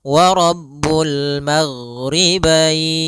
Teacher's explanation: ghain adalah sifatnya rokhawah. Rokhawah itu mengalirnya suara